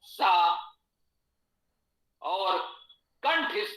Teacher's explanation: जिह्वा दांत को स्पर्श करे तो सा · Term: दंत सा